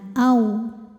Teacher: karena ada wau sukun didahului harakat fathah maka dibacanya cukup dilembutkan atau dilunakkan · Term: harfulin